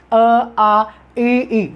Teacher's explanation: तालु है। तो ई को जब आप बोलेंगे तो जीभ कहाँ जाएगी? तालु की तरफ जाएगी।